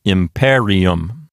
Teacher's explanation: Okay, so the penult is not a long syllable. Therefore, the accent will jump over to the left one notch to the antepenult.